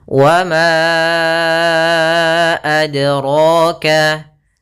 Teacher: Yaitu kita panjangkan 4 atau 5 harokat. Maka ma-nya kita panjangkan dahulu baru kita baca a-nya. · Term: mad jaiz munfasil